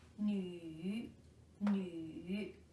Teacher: This is a 3rd tone, also called as a falling rising tone, a turning tone.